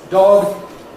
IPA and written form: dɒg (dog)